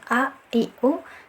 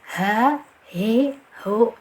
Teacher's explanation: Lawannya dari hamzah ini, dari segi suara dia berlawanan. Hamzah ini syiddah, ditahan a, i, u, sedangkan untuk ha ini rohoh, mengalir suaranya